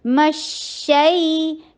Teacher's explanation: میم کے اوپر فتحہ, فتحہ کے لیے جبڑے کو کھولیے. شین کے اوپر تفشی کیجئے, رخاوا کیجئے, آواز چلاتے چلے جائیے. مشئی یہ لین ہے, یا سے یا ساکنہ قبلہ مفتوح.